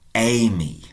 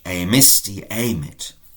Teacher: We had the verb emere, to buy, and I said all that happens here is that the actual initial vowel elongates to become amy, I bought, amisti, amit.